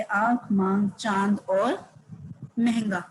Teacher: अनुनासिक इसमें हम चंद्रबिंदु का इस्तेमाल करते हैं इसके उपचार में हवा नाक और मुंह से निकलती है